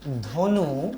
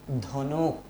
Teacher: যেমন ধনু, এই শব্দটা অনেকে উচ্চারণ করেন ধনুক। এই যে শব্দের শেষে অতিরিক্ত একটা ক এসেছে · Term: অন্ত ব্যঞ্জনাগম